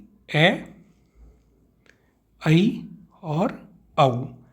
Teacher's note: अर्धविवृत, यानी कि आधा मुंह खुले